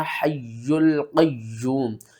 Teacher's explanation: یہ قرآن پاک میں 29 صورتیں ایسی ہیں جن کے شروع میں یہ الفاظ آتے ہیں، اور یہاں پر ہم نے لام کو میم کے ساتھ ملانا اور میم کے اوپر غنہ بھی کر کے پڑھنا ہے، اور یہاں پر ہم نے کیا کرنا، حی القیوم۔ یہ جو یا کے اوپر تشدید ہے اس کو ہم 2 بار پڑھیں گے،